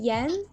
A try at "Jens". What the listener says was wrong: Jens. It's an S at the end, so it's Jens. Pronounce it J like a Y.